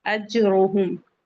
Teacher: रॉ को heavy पढ़ेंगे, जिम पे कलकला भी होगा